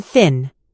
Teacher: Place your tongue gently between your teeth and blow air out. Don't let your vocal cords vibrate. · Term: voiceless